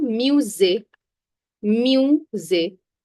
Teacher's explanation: S, when it is squeezed between two vowels, it has a Z sound.